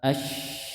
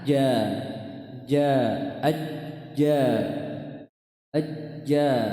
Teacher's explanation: Cuma bedanya huruf shin dia ada suara yang menyebar. Ash. Dan huruf jim itu suara ketahan.